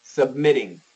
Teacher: Americans are almost always going to go with the flat T.